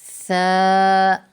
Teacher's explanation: ثا، زبان کی نوک اور ثنایا علیہ کا سرا جب لگے تو اس وقت ثا میں ہم سیٹی کی آواز نہیں نکالیں گے، بالکل نرمی کے ساتھ ہم اس کو ادا کریں گے